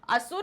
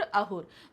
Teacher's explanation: संस्कृत की सा ध्वनि फारसी में हा हो जाती है